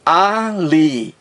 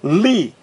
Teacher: Ali. Duas sílabas. Ali. A sílaba mais forte é a última. Li. Logo, a palavra ali é oxítona, terminada em I.